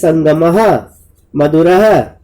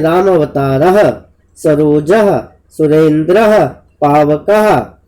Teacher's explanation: और आप ये भी बता सकते हैं बच्चों को कि जब हम विसर्ग का वाचन करते हैं उस समय अंत में अह, जैसे संगमः, मधुरः, इस तरीके से अह आता है। तो आप बोल के बता सकते हैं राम अवतारः, सरोजः, सुरेंद्रः, पावकः, ठीक है।